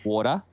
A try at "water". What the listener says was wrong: There's no T's.